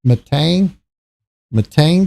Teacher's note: the second syllable gets the enunciation